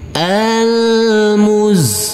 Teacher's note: karena di atasnya ada tanda baca tasdid kita tekan dan kita Tahan saja dengan dua harakat